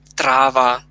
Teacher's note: там наголос усе буде на другий склад у кінця